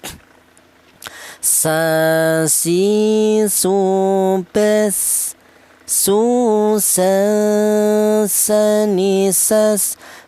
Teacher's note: Huruf sin ini keluarnya huruf berasal dari ujung lidah menyentuh pangkal gigi seri bawah ya.